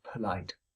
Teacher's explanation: it's a 2-syllable word, but all I've done is to say the P, allowed my articulation of the P to finish, and then I start saying light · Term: open transition